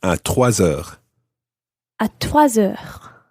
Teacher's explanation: You run the S of trois into it.